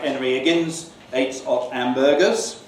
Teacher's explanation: H in English occurs only preceding vowels. In basilectal English, that's to say broad regional accents, H is often dropped. We call it H dropping.